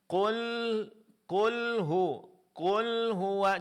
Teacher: di antara sifat huruf lam pengucapannya suara antara tertahan dan dilepaskan jadi pertengahan. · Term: huruf lam sukun